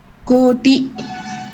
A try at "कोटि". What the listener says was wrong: கோட்டி இழுக்க வேண்டாம் கோட்டி